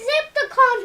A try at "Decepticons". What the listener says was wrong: Decepticons. Not Zepticons. There's no Z. No, it sounded like you said Zepticons.